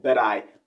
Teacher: He replaced the T at the end of but with a D sound.